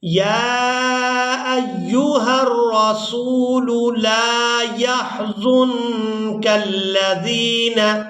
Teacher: نون ساکن پر اخفا کریں گے، یعنی نون کی آواز کو ناک میں چھپا کر ادا کریں گے